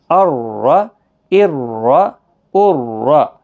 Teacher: حمزہ را زبر ار، را زبر را، موٹا پڑھنا ہے کیونکہ زبر ہے اس کے اوپر